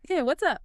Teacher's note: Notice that what is becomes what's and up often gets a slightly shorter vowel sound.